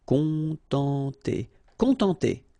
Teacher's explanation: nasal, on, and then en